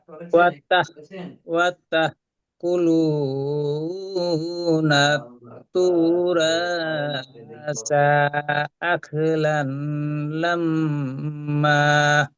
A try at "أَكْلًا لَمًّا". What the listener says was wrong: লাল নয় তো, এটা লাল আছে, লাম লাম জবর। আমি লান শুনতে পেলাম, ওই জন্য বলছি। ওই জন্য বলছি, লাল লাল হবে, হ্যাঁ। আমিও লান শুনতে পেলাম, ওই জন্য বলছি।